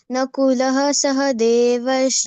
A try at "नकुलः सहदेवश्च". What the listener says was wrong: Nakulaha is not there. I told you to remove the Visarga. Next letter we are seeing. Next letter is Sa. So half Sa it should be added in between Nakula and Sahadev. Nakulas.